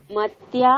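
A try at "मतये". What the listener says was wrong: মতয়ে। দেখো এখানে দুটো আছে, একটা হতে পারে তুমি মতয়ে বলো, মতয়ে, কোনো ডবল তো নয়, মতয়ে। অথবা মত্যই বলো, ম তয় জফলা ঐকার।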